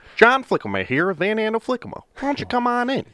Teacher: we're pretty nasally like their West Michigan accent